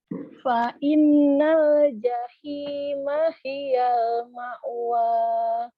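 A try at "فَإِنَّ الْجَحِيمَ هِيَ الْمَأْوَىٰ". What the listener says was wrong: Bagus, kurang dengung, coba diulang lagi.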